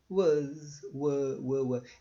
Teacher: A língua nem levantou do chão da boca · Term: schwa